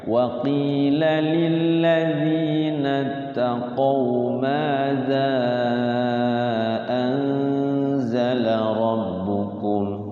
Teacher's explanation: Lillazi itu sama dengan maza di ujung lidah ya.